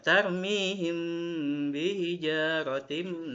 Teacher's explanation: kita membaca mim sukun ketemu ba, maka dibacanya samar-samar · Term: ikhfa syafawi